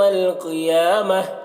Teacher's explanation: قیامتی، قوف کو پر پڑھنا ہے